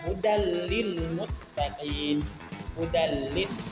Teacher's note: Kemudian contoh lain, pada huruf lam, hudal lil muttaqin, hudal lil. Nah, itu lam yang berharokat hatain berjumpa dengan huruf lam, itu tidak didengungkan tetapi dileburkan, tidak dibaca panjang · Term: idam bila gunna, idgham bilaguna